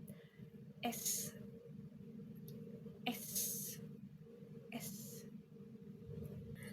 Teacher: dilakukan dengan ujung lidah mendekat ke langit-langit ke langit-langit mulut bagian depan dan udara dikeluarkan melalui celah kecil di antara lidah dan langit-langit.